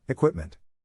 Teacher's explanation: the accent is in the second syllable, corresponding to quip